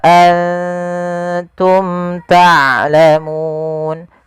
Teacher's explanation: izhar artinya jelas syafawi berkenaan dengan bibir karena makhraj daripada huruf Mim daripada bibir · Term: izhar syafawi